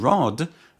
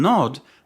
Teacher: In rod, the airflow passes through the mouth. In nod, the airflow passes through the nose.